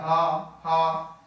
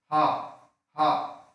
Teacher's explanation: क्या कहते हैं उरस्व, उरस्व उर माने होता है हृदय, और इसीलिए उर से बोला जाता है, वायु निकली और केवल कंठ में टच होती कहीं नहीं होती, तो ऐसा लगता है हम हृदय से बोल रहे हैं हा हा, तो इसलिए उरस्व व्यंजन भी कहते हैं, ठीक है।